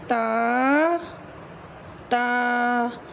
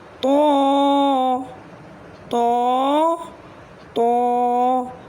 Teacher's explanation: تو، تو، تو، تو کو بھی ہم موٹا پڑھیں گے۔ تا اور دال ہم نے باریک پڑھے اور تو کو ہم نے موٹا پڑھا۔ ان حروف کو حروف نطعیہ کہتے ہیں۔